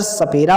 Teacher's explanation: सपेरा वाला सा जो होता है वह दांत से उच्चारण होता है